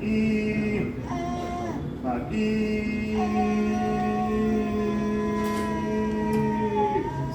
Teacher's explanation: once the tongue extension is reduced by pulling the tongue, you can have a better sound and you see that she has good closure, complete glottal closure.